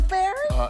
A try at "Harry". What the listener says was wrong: It's actually Harry Taylor Harry. The P is silent.